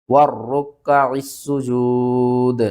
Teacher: سین کو ہم نے سیٹی کے ساتھ پڑھنا ہے، 2 بار پڑھنا ہے اور سختی کے ساتھ پڑھنا ہے